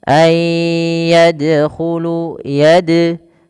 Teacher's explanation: huruf dal di sini adalah bacaan qalqalah yang dimana dalnya harus mantul, tidak dibaca ayyadkhulu.